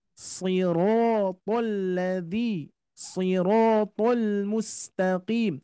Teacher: huruf shad meskipun kasroh, tapi dia tetap tebal